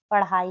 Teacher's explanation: जीभ की नोक झटके से नीचे गिरती है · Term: उत्क्षिप्त